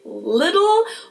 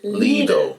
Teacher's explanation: both of the L sounds are light L's to pronounce with the top of your tongue. So it's le instead of little.